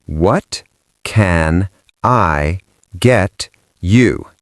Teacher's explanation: In a New York accent, the what loses the T, the can becomes just a CN sound, and get you becomes getcha.